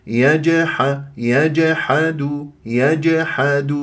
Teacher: اضرب المخرج في الجيم المقلقله قلقله الصغرى